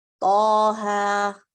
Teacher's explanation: تو یہ دونوں مد طبیعی ہوں گے, نیچرل 2 کاؤنٹ کریں گے, جیسے نارملی الف مد, واو مد, یا مد کو کرتے ہیں ویسے ہی.